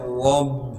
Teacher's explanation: را کو موٹا کر کے پڑھیں گے کیونکہ را پر زبر ہے